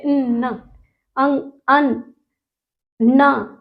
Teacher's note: क्या उसकी साउंड जो होती है वो नाक से टकराती है जरा जरा से आवाज जैसे लगता है मुंह से ना निकल कर वो नाक से निकल रही है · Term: नासिका